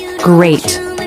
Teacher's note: the back of the tongue reaches up to touch the soft palate which is closed the tip of the tongue can remain forward lightly touching the